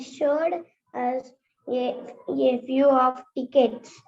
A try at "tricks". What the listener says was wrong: Tricks, not tickets. Tricks.